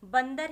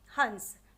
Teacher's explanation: अनुस्वार के विषय में पढ़ा जिसका उच्चारण सिर्फ नाक से होता है